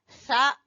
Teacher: जबान की नोक और सामने वाले दो दांतों के सिरे से सा सीटी की आवाज नहीं आनी चाहिए